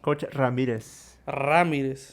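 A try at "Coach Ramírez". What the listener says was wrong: You gotta roll your R's if not. If not, they ain't the same.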